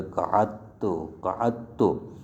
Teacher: دال کو پس تا کی جنس میں تبدیل کر دیں گے، تا بنا دیں گے اور تا کو تا میں ادغام کر دیں گے